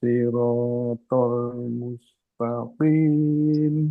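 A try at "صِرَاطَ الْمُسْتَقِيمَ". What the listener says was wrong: Ya. To-nya kurang tebel. To. Ini Ini juga shotnya itu jangan sampai kayak sin. Ya, shot ini tebel. Lambenya nggak boleh bergerak. Ini bukan di lambe. dia makanya makrotnya di sini. Kayak sin, tapi dia tebel. lidahnya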